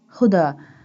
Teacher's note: This one ha pronounced from the bottom part of the throat.